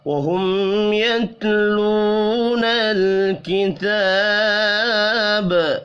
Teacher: میم ساکن کے بعد یا ہے، اظہار شفوی ہوگا، غنہ نہیں ہوگا۔ واو مدہ کو ایک الف کے برابر کھینچ کر پڑھیں گے، تا کے اوپر کھڑی زبر ہے، اس کو بھی ایک الف کے برابر کھینچ کر پڑھنا ہے۔